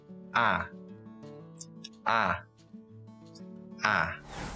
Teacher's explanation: Technically, it's called the near-open front unrounded vowel. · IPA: /æ/